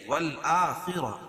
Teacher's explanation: خا کو پر پڑھیں گے کیوں؟ خا حروف مستعلیہ میں سے